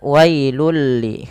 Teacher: langsung masukkan bunyi tanwinnya kepada huruf lam dan diganti bunyinya menjadi bunyi lam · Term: idgham bila gunnah